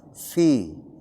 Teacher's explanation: penyebutan huruf fa yang benar adalah ada keluar napas. Fi. Bukan pi tapi fi.